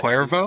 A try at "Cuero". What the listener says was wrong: Cuero, no V.